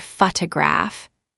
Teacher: in the word photograph, the stress is on the first syllable